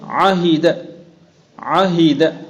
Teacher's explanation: عین اور ہا ایک وسط حلق سے اور ایک اقصائے حلق سے